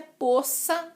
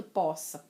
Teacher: O correto é poça d'água, mas até aceito poça, com O aberto.